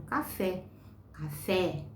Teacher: A mais forte é o fé, então ela é oxítona.